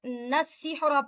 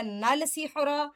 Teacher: لام شمسیہ کا مطلب ہوتا ہے ایسا لام جو ادا نہیں کیا جاتا. نون کے ساتھ سین کو ملا کر نسحر پڑھا جائے گا، نل سحر نہیں پڑھا جائے گا